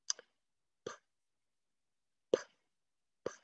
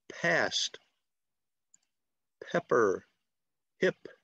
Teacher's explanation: So you're not using your voice to say the sound. You're not using your larynx. You're not using your vocal cords. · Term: unvoiced